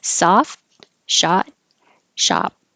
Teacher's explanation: All have the ah vowel. And you don't hear the final sound in any of them. You just hold the T and hold the P.